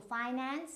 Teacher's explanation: now this is a noun, and when you're using it as a noun, so the stress will always be in the first syllable.